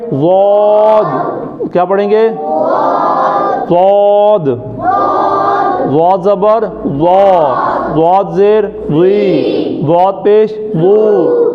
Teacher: زبان کے دونوں کنارے اوپر والی داڑھوں سے لگتے ہیں